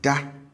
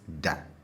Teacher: the tone on the habitual form tends to be high. And then the tone on the stative form tends to be low.